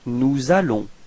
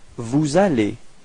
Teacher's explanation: you can notice the liaison between S and A